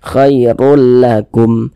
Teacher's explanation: Huruf ra memiliki harokat dhammatain ya, memiliki tanda baca dhammatain, dibaca tabkhim juga, dibaca tebal juga. Tebalkan huruf ra-nya.